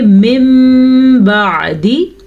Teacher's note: نون ساکن یا نون تنوین کو اس چھوٹے سے میم میں بدل دیتے ہیں. پھر نون کے بجائے میم پڑھا جاتا ہے. جیسے کہ اس کو ہم پڑھیں گے من بعدی.